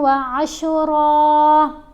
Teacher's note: یہاں دیکھیں را کے اوپر ہم وقف کر رہے ہیں، را کے اوپر دو زبر ہیں اور وقف آ رہا ہے، تو جب ہم وقف کریں گے تو پھر ایک زبر پڑی جائے گی اور ایک زبر جو ہے وہ خاموش ہو جائے گی